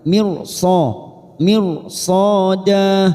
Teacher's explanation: ro sukun yang bertemu dengan huruf istilla huruf sho huruf istilla maka kita baca tafkim